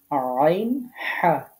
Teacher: কণ্ঠনালীর মধ্যখান থেকে উচ্চারিত হয়